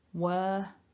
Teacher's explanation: So if the next word begins with a vowel, that R activates, but when we're pronouncing the word in isolation, which to be fair, very rarely occurs in natural speech, in isolation, no linking R